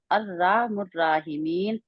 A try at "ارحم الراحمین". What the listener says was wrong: میں نہیں ہے، ارحم الراحمین، را موٹی بھی رہیں گی دونوں۔ آپ کہہ رہے ہیں ارہا، ہا کے آگے الف ہے؟